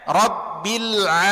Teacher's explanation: Makhraj dari huruf ain ini adalah tenggorokan.